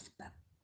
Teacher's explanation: pada posisi akhir, sebagai koda, posisinya mendua, maksudnya sebagai fonem B, dan dapat pula sebagai fonem P.